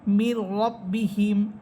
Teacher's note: এখানে নুন সাকিনের পর র হরফ গুন্না হবে না